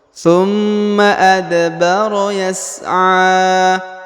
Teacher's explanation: atau huruf pantul maka dibaca pantul adbaro tumma adbaro adbaro Yas huruf a dipanjangkan ya dua atau tiga harakat ya karena di atasnya terdapat Alif kecil